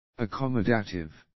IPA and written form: ə'kɒmə'deɪtɪv (accommodative)